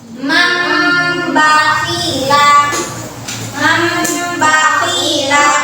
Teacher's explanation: dirubah bunyi nun mati itu menjadi huruf mim